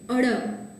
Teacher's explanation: અળ જ્યારે તમે બોલો ત્યારે તમારી જીભ છે એ ઉપર મૂર્ધા ભાગ, આ ઉપરનો જે મૂર્ધા કોમળ કઠોર તાલુ છે એની બાજુનો ભાગ એ મૂર્ધા ભાગને સ્પર્શે છે. અને ઉચ્ચારણ વખતે એકદમ થડકાર અનુભવાય છે. એક થડકો છે એ તમે અનુભવો, જેમ કે અળ, તો સ્વાભાવિક એક થડકો છે એ તમે અનુભવો છો. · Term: મૂર્ધન્ય થડકારવાળો ધ્વનિ